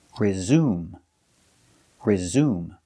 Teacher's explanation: the stress is on the second syllable resume resume the e is silent it's following the rule silent